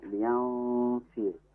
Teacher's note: hukumnya ikhfa hakiki, yanfi karena ada nun sukun bertemu dengan huruf fa, di mana huruf fa ini adalah huruf ikhfa.